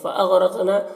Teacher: فَأَغْرَقْنَا غین حروف مستعلیہ میں سے ہے، را کو پر زبر ہے، را کو پر پڑھیں گے۔ قاف میں قلقلہ ہوگا، اور قاف حروف مستعلیہ میں سے بھی ہے، نون میں کھڑا زبر ہے، میم میں اظہار شفوی ہو رہا۔